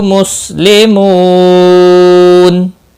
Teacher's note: مسلمو، مو واو مدہ ہے، ایک الف کے برابر کھینچ کر پڑھیں گے، اور نون وقف کی صورت میں نون ساکن پڑھا جائے گا، وقف بالاسکان ہوگا، مد العارض وقفی ہوگا، 3 سے 5 سیکنڈ یا 3 سے 5 الف کے برابر کھینچ کر وقف کریں گے۔